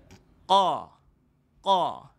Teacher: Huruf qaf makhraj ni tuan-tuan duduknya di pangkal kerongkong.